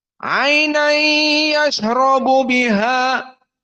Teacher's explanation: Ainai masuk ke hidung dalam 2 harokat. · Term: idgham bi gunnah